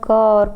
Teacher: तो कंठ ध्वनियाँ क और ख हैं